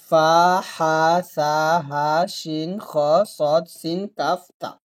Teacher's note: এই 8টি হরফ যখন আপনি উচ্চারণ করবেন এটা অটো বাতাস বের হয়, এখানে বাতাস বের করার দরকার হয় না, আপনার অটোমেটিক্যালি বাতাসটা বের হয়ে যায়। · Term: হামস